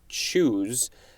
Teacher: But anyway, I think what they're saying is the T and the SH of choose, the ch sound could be spelled, or if you were to write it phonetically, could be a T and an SH sound combined, like they're rubbing up against each other